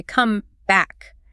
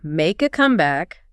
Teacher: When it's the verb, we say come back. Equal stress or stress on the second word. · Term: stress pattern